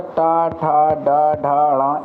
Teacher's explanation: ये सब मूर्धन्य हैं। इनका उच्चारण जो है तालु के आगे के भाग से होता है